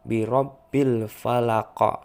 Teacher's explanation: Di situ ada qaf yang disukunkan di akhir kalimat yang dinamakan qalqalah kubro, besar. Jadi harus terdengar jelas qalqalahnya.